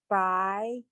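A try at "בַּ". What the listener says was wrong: No, there's no yes sound. It's ba. No, the little T also is the ah sound.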